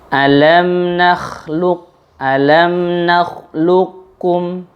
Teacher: dibaca langsung huruf kaf tanpa mengqalqalahkan huruf qaf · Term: idgham mutaqaribain